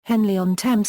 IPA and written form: ˈhɛnliː ɒn ˈtɛmz (Henley-on-Thames)